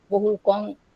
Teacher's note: But in Prakrit, we find the word Bahukan becomes Bahukang. Bahukang, here, main accent is shifted on the second syllable from the third syllable, making the word Bahukang.